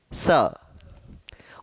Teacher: दंत स, हल्की सी जीभ दांत को छूती है